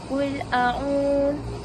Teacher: Dekat a'u itu mad tabi'i kerana ada waw sukun sebelumnya domah, dan cara bacaannya ain dipanjangkan 2 harakat